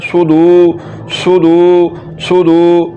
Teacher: दाल के ऊपर जो पेश है इसको लंबा करना है